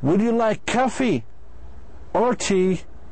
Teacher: So the speaker's voice, صوته, goes up on the first item and down on the second item. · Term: either or question